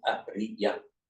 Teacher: Arya in Sanskrit and Ariya, 3 short syllables in Pali.